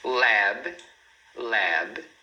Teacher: A gente fecha aqui os lábios para fazer o som do B, sem colocar esse I que a gente normalmente faz em português, porque a gente sente a necessidade de ter uma vogal depois de consoante, mas em inglês não.